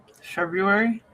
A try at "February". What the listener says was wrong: February. There's an R in there. February. But almost no, like a large body of people do not pronounce the extra R. They say February.